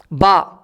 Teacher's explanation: دونوں ہونٹوں سے نکلتا ہے